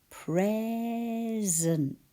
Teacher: We have a z for the S in between two vowels. Pr, P-R, E is E, Z is S, and then E-N-T, present.